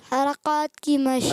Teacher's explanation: ابھی بھی کاف تھوڑا موٹا محسوس ہو رہا ہے